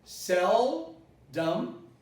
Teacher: I say sell with an L, naturally, not with a U. Seldom, and this is neutralized.